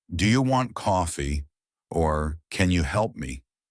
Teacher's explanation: Your voice should rise at the end.